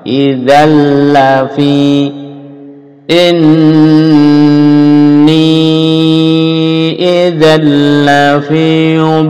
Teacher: dimasukkan lam menjadi idzan lafi tapi tanpa dengung